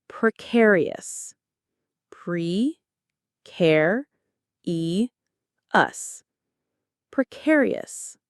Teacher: The stress lands on the c in the middle.